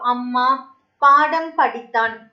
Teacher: குறுக்கம் மகர குறுக்கத்துல பார்த்துட்டோம்னா இப்ப அம்மா பாடம் படித்தான் இந்த மாதிரி சொற்கள்ல மகர மெய்யெழுத்து வந்து தனக்குரிய அரை மாத்திரை அளவுல முழுமையா ஒலிக்கும்